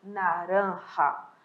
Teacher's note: Observem que o R tem um som mais forte e o J tem um som mais suave